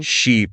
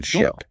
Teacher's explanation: smiling wide for those long vowels like in sheep and keeping things relaxed for the short vowels like in ship